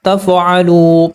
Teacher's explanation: واو ساکن سے پہلے پیش ہے، واو حروف مدہ، پیش کو 2 حرکات کے برابر لمبا کریں گے۔ الف سائلنٹ ہے، نہیں پڑھا جائے گا۔